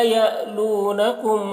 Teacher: لا یعلونکم کے لام میں الف مدہ ہے اور یا کے اوپر جھٹکا لگے گا، الف حمزہ ساکنہ ہے تو جھٹکا لگا کر پڑھیں گے